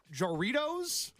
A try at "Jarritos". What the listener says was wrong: Yeah, it's Jarritos, but when you say it, you sound like you're saying Doritos. Jarritos. It's like Jarritos is kind of how you'd say it.